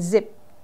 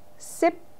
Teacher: is voiced okay if you guess zip you're right the Z the Z Sounds makes your vocal cords vibrate while the S sound doesn't